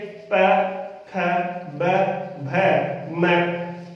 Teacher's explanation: एक भी इनमें से व्यंजन ऐसा नहीं है जिसका उच्चारण हम बिना होठों के मिलान के कर सकते हैं। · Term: ओष्ठ्य व्यंजन